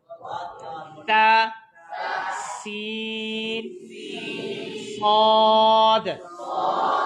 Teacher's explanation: سین کی آواز سٹی کی طرح